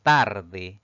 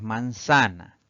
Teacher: palabra es tarde Si dividimos en sílabas pues tiene dos sílabas la mayor fuerza de voz recae en la penúltima sílaba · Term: palabra grave